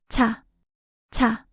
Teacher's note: Similar to ch chew and chat, but strongly aspirated, a clear burst of air. It's sharper than chew. It's chew with an extra stroke, showing more breath.